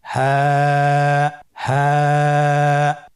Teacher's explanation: হা হরফটি উচ্চারণ ক্ষেত্রে অবশ্যই বারিক হবে এবং 1 আলিফ টেনে পড়তে হবে।